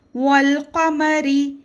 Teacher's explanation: یہاں پہ حروف قمری کا قاعدہ ہے. الف کو نہیں پڑھیں گے، واو کو لام سے ملائیں گے اور حرکات کو جلد پڑھیں گے. · زال کو نرمے سے پڑھیں گے اور الف مدہ ہے، تھوڑا کھینچ کر پڑھیں گے